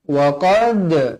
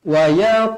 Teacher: qalqalah sughra dibaca melantun